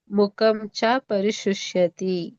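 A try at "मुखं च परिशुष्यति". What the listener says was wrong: ನೀವು ಸಣ್ಣ ಹೇಳಿದ್ರಿ ಮುಖಂ ಅಂತ ಅಂತ ಹೇಳಿದ್ರಿ ಅಲ್ಲಿ ದೊಡ್ಡ ಕಾ ಇದೆ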